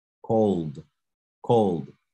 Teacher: De pronto suene como una T, pero es una D.